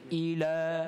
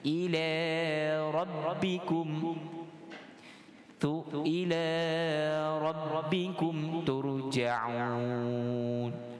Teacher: Sebenar bacaan fasihnya ila rabbikum, kita fathahkan dia, dan sifat lam itu dia nipis. Ila rabbikum, ila rabbikum turja'un.